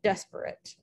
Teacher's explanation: dactylic which is three syllables stressed unstressed unstressed